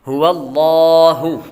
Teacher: یہاں پر لفظ اللہ کے لام کو پر پڑھیں گے۔ کیوں؟ لفظ اللہ کے لام سے پہلے حرف پر زبر ہو تو لفظ اللہ کے لام کو پر پڑتی ہے۔